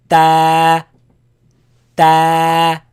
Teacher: Comes from when you put the frontal part of your tongue behind the upper teeth.